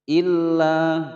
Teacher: Illa ditekan, ada lam bertasydid, kemudian dibaca panjang selama dua ketukan